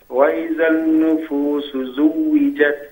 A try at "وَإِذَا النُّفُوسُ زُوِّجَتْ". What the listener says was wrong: We don't read the lam. We don't pronounce the lam of an-nufus because this is called lam shamsiyya. When we say ash-shams, it is to be written, not to be pronounced. So we will say وَإِذَا النُّفُوسُ.